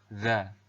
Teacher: huruf za ini diucapkan dengan menyentuhkan ujung lidah dengan dinding dua gigi seri bagian atas seperti kita mengucapkan huruf tha ya.